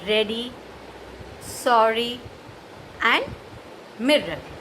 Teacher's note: That is the post-alveolar sound produced when the tip of the tongue touches the point between the alveolar ridge and the hard palate.